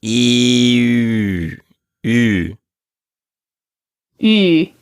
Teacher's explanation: Say the E in feet, E, but then keep that same tongue position inside your mouth, but make your lips into an O. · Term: rounded vowel